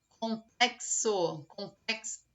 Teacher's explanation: complexo é o único x que você quando vai pronunciar a palavra tem o som do KS